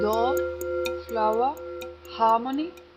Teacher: R following vowels is lost in RP.